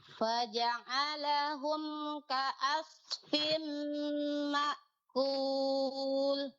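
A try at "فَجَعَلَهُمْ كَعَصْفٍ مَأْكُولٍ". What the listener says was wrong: Nah, pada huruf ainnya lebih dijelaskan ya, Bu.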